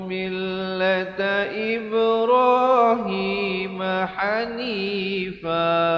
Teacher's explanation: Fan bila waqaf menjadi fa